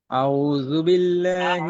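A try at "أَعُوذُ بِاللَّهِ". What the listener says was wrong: আইনটা শক্ত করতে হবে ভাইজান। আউযু আউযু রিল্যাক্সে।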